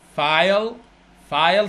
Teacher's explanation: صوت الاي تحس رافع صاعد فوق بعدين نازل